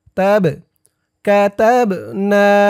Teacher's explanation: বা কলকলার হরফ ধাক্কা দিয়ে পড়তে হবে